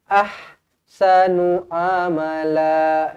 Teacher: Pastikan di sini kita baca betul-betul huruf ha pedas. Ahsanu. Jangan ayyuhum ahsanu.